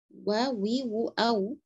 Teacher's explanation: memunyungkan bibir, sempurnakan munyungnya, tidak boleh wa, enggak, wa lembut saja.